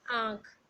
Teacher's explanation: अनुनासिक इसका उच्चारण करते समय हवा नाक और मुंह दोनों से निकलती है